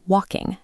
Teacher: Be careful not to push a heavy g sound on the ing. It sounds like walking, not walking g.